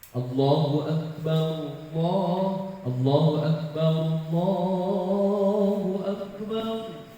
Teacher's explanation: Hamzah itu punya syiddah dan jahar, nafas dan suara berhenti.